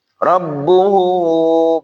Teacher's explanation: mad silah qasirah pendek ya enggak usah panjang-panjang cukup dua harakat